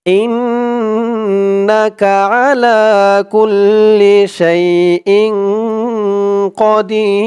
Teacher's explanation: কদির দি বলে 3 আলিফ টান দিয়ে এই র কে ধরবে, রর উপরে 2 পেশ তানবিন সাকিন হয়ে যাবে। এই 3 আলিফ টানের নাম মদ্দে আরজি।